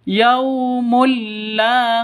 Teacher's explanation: tanwin bertemu dengan lam masuk ke lamnya cara bacanya masuk ke lam tanpa dengung karena karena idgham Bila gunah masuk ke lam tanpa dengung yaumulla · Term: idgham bila gunnah